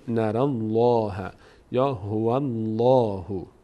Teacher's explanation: فتحه یا ضمه بود پر خونده میشه